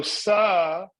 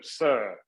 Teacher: So you notice in sa, it's the more open sound.